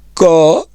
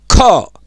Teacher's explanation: मेरी आवाज बाहर को आ रही है जोर से और उस पे कुछ जोर लगाना पड़ रहा है यानी महाप्राण लगाने पड़ रहे हैं तो ख तो यह महाप्राण है।